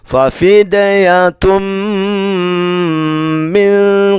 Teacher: maka tanwin bertemu mim dibaca dengung.